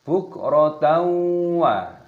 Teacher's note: fathah tanwin yang bertemu dengan wawu, hukumnya dibaca idgham bi gunnah, dimasukkan dan disertai berdengung.